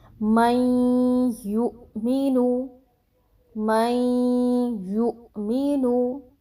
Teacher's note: اب آپ اس چیز کو محسوس کر رہے ہوں گے کہ آپ کے ناک کی طرف خیشوم میں آواز جا کر ٹھہر رہی ہے، ٹھیک ہے، تو اس کو کہتے ہیں غنہ۔